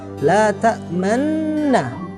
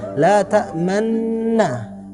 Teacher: Yang seharusnya diharokatnya fathah, tapi bibir kita pada saat mengucapkannya itu seakan-akan mengucapkan dhamma. Tapi tetap harus di garis bawahi, huruf yang kita ucapkan tetap la ta'manna, tapi bibir kita aja yang bisa dibilang monyong gitu. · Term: al-ismam